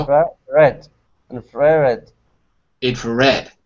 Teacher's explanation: We almost don't hear the first two syllables. We hear the red more strongly than the others.